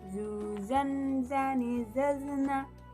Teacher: Dikeluarkan dengan lisan kita hampir di atas dua gigi seri bagian bawah. diucapkan dengan mengalirkan suara tanpa diiringi dengan mengalirnya udara. Karakternya khas, yaitu mirip dengan suara dengungan tawon. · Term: huruf za